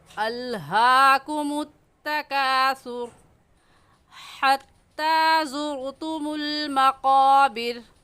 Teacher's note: قاف کو موٹا کر کے پڑھیں گے، اور موٹا کرنے کا طریقہ کہ آپ کے دونوں ہونٹ گول ہو جائیں